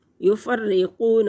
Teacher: वाव साकिन से पहले लफ्ज़ पेश वाव मद्दा, एक हरकत के बराबर खींच कर पढ़ेंगे